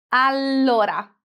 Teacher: Allora has a double consonant. Allora. It means that we need to produce a longer sound.